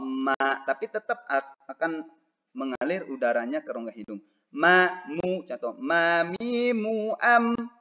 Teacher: Cara mengucapkan mim dengan menyentuhkan bibir atas dengan bibir bawah sambil mengalirkan suara dari rongga hidung.